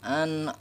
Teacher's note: suara huruf ain ini tidak boleh masuk ke hidung ya, karena huruf ain ini bukan huruf guna, dia tidak bersifat guna.